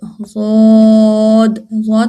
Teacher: پھر اس کے بعد ہے ضاد، ضاد، ضاد ادا ہوتا ہے، زبان کی جو کروٹ ہے یہ اوپر والے داڑوں سے لگے تو ضاد